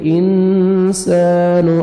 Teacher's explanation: نون ساکن کے بعد حروف اخفاء میں سے سین ہے, تو نوز میں ساؤنڈ لے کے جائیں گے. انسان, الف مدہ, 1 سیکنڈ سین کو کھینچنا بھی ہے.